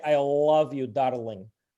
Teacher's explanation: the L sound is hard and it's pronounced by the tip of the tongue touching the inside of your upper teeth